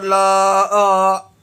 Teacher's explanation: 3 انگلیوں کی مقدار کھینچ کے پڑھیں گے اس مد کو، یعنی 3 سیکنڈ تک اسے آپ کھینچ کے ادا کریں گے۔ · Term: چھوٹا مد